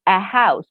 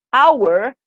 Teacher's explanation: like a consonant a house but with the word our hour the h is silent so it doesn't sound we hear the sound of the vowel